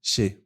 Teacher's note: No meu caso, eu pronuncio che, porque o meu acento, o meu sotaque é o rioplatense, o argentino, o uruguaio